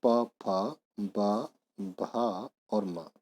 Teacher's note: जिन वर्णों का उच्चारण होठों से होता है उन्हें ओष्ठ वर्ण बोलते हैं।